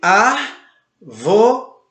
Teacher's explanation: ela tem a sua antepenúltima sílaba acentuada, ou seja, a letra A é acentuada. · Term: proparoxítona